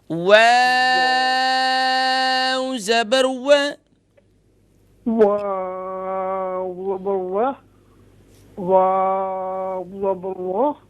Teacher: دونوں ہونٹوں کو گول کر کے یہ اسے ادا کرتے ہیں، دونوں ہونٹوں کی گولائی سے ادا ہوتے ہیں